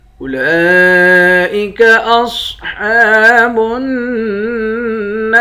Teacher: اولئک اصحاب النار، لام کے اوپر کھڑا زبر ہے، کھڑے زبر کے اوپر مد ہے، اس مد کو پانچ الف کے برابر کھینچ کر پڑھتے ہیں۔ صاد کو موٹا پڑھیں گے، ہا کے اوپر کھڑا زبر ہے، اس کو بھی ایک الف کے برابر کھینچیں گے، نون مشدد پر غنہ کریں گے، نون کے بعد الف ہے، الف حروف مدہ ہے، ایک الف کے برابر کھینچ کر پڑھتے ہیں، آخر میں را ساکن ہے۔